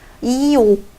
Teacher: 이오, 그 요구르트 이름 발음해 보면은 이 혓바닥이 위로 쫙 올라가 있다가 오 하면은 뒤로 훅 빠져버리거든요.